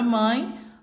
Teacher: a palavra mãe nós temos o ar aí está indo tanto pela boca quanto pelas fossas nasais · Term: nasal, ditongo